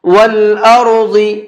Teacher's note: را کو بھی اور ضاد کو بھی دونوں کو منہ بھر کے پڑھیں گے، پر کر کے پڑھیں گے۔